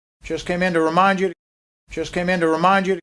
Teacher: So all of that just came is part of our rising intonation. And notice the T is gone.